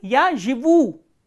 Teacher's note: So, here u is stressed.